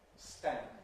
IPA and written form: stænd (stand)